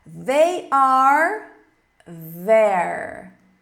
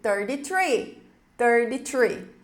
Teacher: Enquanto they tem o som do TH vozeado, 33 é desvozeado, é um assopro.